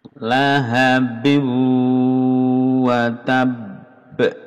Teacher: Lahabin ini tanwin bertemu wawu idgham bimunah mendengung